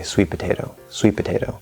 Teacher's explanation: you go into the first p you hold it for a second usually and then you release the pee in potato